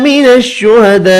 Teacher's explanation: من الشہداء بڑی مد کو 5 الف کی مقدار میں کھینچ کر پڑھیں گے